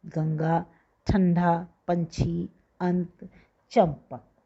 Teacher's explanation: इसके बाद हमेशा कोई व्यंजन आता है, जिस व्यंजन से पहले ये आता है उसी व्यंजन के वर्ग के पंचम वर्ण यानी कि नासिक व्यंजन के रूप में बोला जाता है। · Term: अनुस्वार